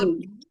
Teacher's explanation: Mim itu datangnya atau keluarnya dari kedua bibir yang dikatupkan dengan ringan.